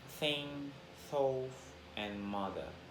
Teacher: Interdental and sound is produced by putting the tip of the tongue between the upper and lower teeth